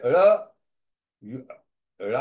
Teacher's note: Ra, if you say, the ra gets corrupted. It no more remains retroflex or murdanya.